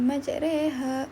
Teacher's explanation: Okey, tanda berlian berongga atau diamond tadi selalunya di bawah huruf. Dan bunyi imalah yang dihasilkan semasa menyebutnya ialah bunyi pertengahan di antara bunyi baris atas fathah dan bunyi baris bawah kasrah.